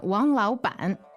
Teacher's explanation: lao ban that's two third tones